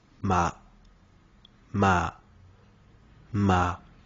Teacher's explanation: Le deuxième ton est haut et montant.